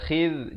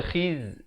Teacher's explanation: Khidh di hujung lidah. Khidh, jangan baca khiz.